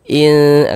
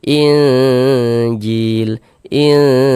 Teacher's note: Maka kita baca samar nun sukunnya kita samarkan in kemudian didengungkan injil. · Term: ikhfa hakiki